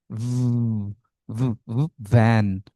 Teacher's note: ভি sound একটা vibration হবে গলায়, উপরের দাঁত নিচের ঠোঁটের মাঝখানে